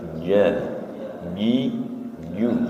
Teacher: jim tidak berdesis nggih, tengah lidah